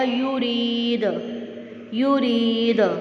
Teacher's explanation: آواز ریفلیکٹ ہو کے واپس آ رہی ہے، تو ہم اس پہ قلقلہ کر رہے ہیں، ٹھیک ہے، کیونکہ دال قطب جد میں سے وہ ہے تو اس پہ قلقلہ ہوگا۔